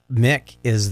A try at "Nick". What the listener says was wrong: Nick. You're saying Mick. It's Nick. Because her full name is Nicole.